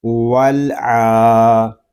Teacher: عین کے اوپر کھڑا زبر ہے، اس کو ہم ایک الف تک کھینچ کر پڑھیں گے